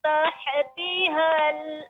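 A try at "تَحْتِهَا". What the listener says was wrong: Ya, Ibu, untuk pengucapan tadi terasa pengucapan ya, tahti, maka jangan sampai haknya menjadi qalqalah, ya memantul. Karena hak bukan huruf qalqalah. Tahati, tahati ini lambat. Tahati, seterusnya tahti. Benar-benar haknya tahti.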